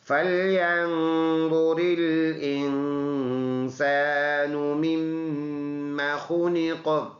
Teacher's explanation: میم مشدد ہے، شد کی وجہ سے ادھر ناک میں آواز لے کے جائیں گے